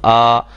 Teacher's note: اس میں کوئی بھی دانت یا زبان کا کوئی حصہ کسی کے ساتھ نہیں لگ رہا، خالی حصے سے ادا ہو رہا ہے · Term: حروف مدہ